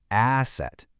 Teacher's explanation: Asset starts with that open ah sound